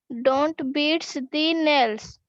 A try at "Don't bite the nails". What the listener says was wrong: No, not beat. Don't bite your nails. Bite. B-I-T-E. Bite.